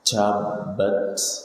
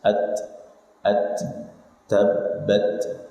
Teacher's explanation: Tabbat, tidak, ini kesalahan. Karena ta tidak punya sifat sofir, ta sifatnya adalah hams